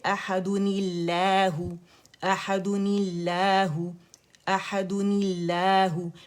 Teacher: کسرہ کو جب لام سے جوڑیں گے تو پھر باریک پڑا جائے گا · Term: نون قطنی